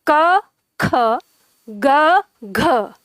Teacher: तो अब आप इनका उच्चारण करके देखो, जैसे आप उच्चारण करते हो क ख, तो आप खुद ही देखेंगे क की तुलना में ख में ज्यादा हवा मुख से निकलती है, क ख ग घ, तो इधर ग की तुलना में घ में ज्यादा हवा निकलती है।